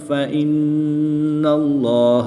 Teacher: اسم جلالت اللہ عز و جل کے لام سے پہلے نون مشدد پر زبر ہے، اس لیے اس لام کو پر یعنی موٹا پڑھیں گے